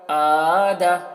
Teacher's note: دال میں زبر ہے تو اس کو نہیں کھینچ رہے ہیں کیونکہ زبر کو جلدی پڑھا جاتا ہے